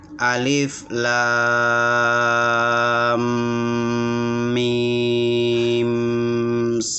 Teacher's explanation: Adapun mim ketemu dengan mim, idgham mim namanya, itu 3 nada atau 3 ritme.